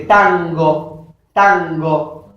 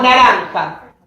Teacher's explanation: Es como una N más continua. Es una N nasalizada, velar.